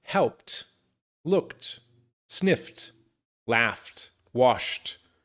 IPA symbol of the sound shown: t